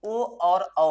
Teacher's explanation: ये ओ और औ स्वर ऐसे हो रहे हैं जिसको बोलने में होठ हमारा क्या हो जा रहा है? गोल हो जा रहा है। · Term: वर्तुल